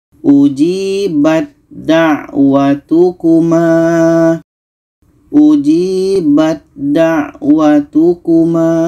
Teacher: Yang kedua untuk ta bertemu da, ini dalam surah Yunus ayat 89. Ada ta bertemu da, maka ta ini kita masukkan ke da.